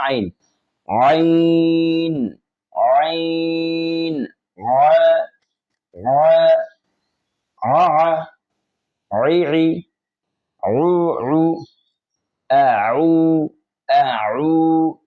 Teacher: আইন হরফটির মধ্যে আওয়াজ চালু থাকে, বাতাস বন্ধ থাকে।